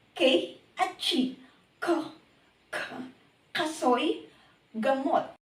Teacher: Velar o pangalangala. Ang ibabaw ng dulong dila ay dumidiit sa velum o malambot na bahagi ng ngalangala.